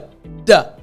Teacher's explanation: the tip of my tongue is actually touching the roof of my mouth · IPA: /d/